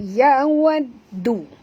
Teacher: huruf dal sini sentil lidah, lembut sebutannya.